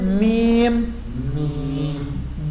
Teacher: ہونٹوں کی خشکی جہاں سے بی ادا ہوتا ہے، میم بھی وہیں سے ادا ہوگا